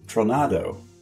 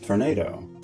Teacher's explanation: Metathesis of R and O and... boom! You have “tornado.”